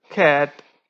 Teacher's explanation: or curve so in this world it's that cur sound and since it's at the beginning of the word so it would be aspirated